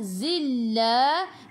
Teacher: Tekan ke dalam lam. Lam ada sabdu.